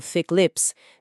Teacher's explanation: Mas thick, que é algo espesso, tipo thick lips, termina com a letra K. O som bloqueia no fundo da garganta.